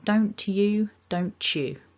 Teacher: don't you can sound more like somebody's saying don't you with the ch